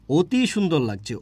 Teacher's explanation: আমি লিখছি অ কিন্তু উচ্চারণ করছি উচ্চারণ করছি ও দিয়ে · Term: অ এর সংবৃত উচ্চারণ